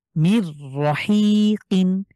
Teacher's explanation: সরাসরি র কে আমরা মিলিয়ে পড়বো গুন্না ছাড়া মিলিয়ে পড়বো